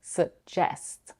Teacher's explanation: The word suggest has two syllables and the stress is on the second one